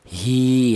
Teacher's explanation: Ya, berarti ini yang terjadi yaitu ada ya mati di mana ya mati ini didahului huruf yang berharakat kasrah ini dibaca mad thobi'i yaitu dipanjangkan dua harakat atau dua ketukan